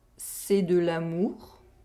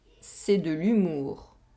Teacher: Here, we have a difference in oral vowel sound. We have the [a] sound in the first sentence, and the [y] sound in the second sentence.